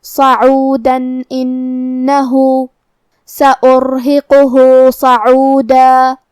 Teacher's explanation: کلمت صعودہ میں یہاں حرف الصاد ہے اور اس پہ زبر ہے، لہذا ہمیں زبر کو ظاہر کرنا ہے، اور جو کہ صاد حروف التفخیم میں سے ہے تو ہم یہ حرف کو بھاری آواز میں منہ پھلا کے ادا کریں گے. آخری میں یہاں دال پہ تنوین زبر ہے.